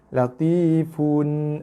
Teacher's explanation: Latifun, ini izhar, zahir kan bunyi fun tanpa dengung. Fun khabir, bir 4 harakat.